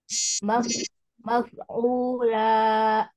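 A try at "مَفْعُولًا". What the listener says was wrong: Jangan ada la. Hamzahnya hilangin ya. Belakangnya jangan dikasih Hamzah.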